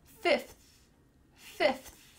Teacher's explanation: My tongue is between my teeth. I hope yours is too.